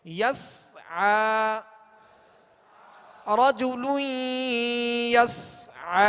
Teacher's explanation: سین پر کیا ہے؟ جزم، سکون ہے، لہذا اس کی آواز ہلے گی نہیں، قلقلہ پیدا نہ ہو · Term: سکون کامل